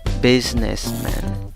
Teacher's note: la última sílaba podría pronunciarse de una manera diferente, no con A, la A larga, sino también con una schwa, la que suena como A.